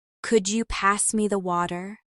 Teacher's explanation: Notice the flap t in water and the linking between pass me as so it sounds smooth.